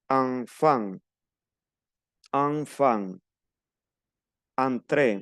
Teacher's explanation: que veamos e n y n en una en una palabra se pronuncia an una a una n nasal an como si nos tapamos la nariz · Una N nasal, AN, como si nos tapáramos la nariz.